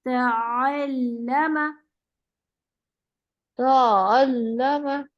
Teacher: شاباش, آئین کو نرم رکھیں, مطلب تھوڑی سی بھی نا حمزہ نہیں آنا چاہیے, حمزہ جیسی سختی نہیں آنی چاہیے, نرمی سے